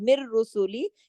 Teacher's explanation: نون ساکن کے بعد را آ رہا ہے لیکن غنہ کوئی نہیں ہو رہا، یہ ادغام ہو رہا ہے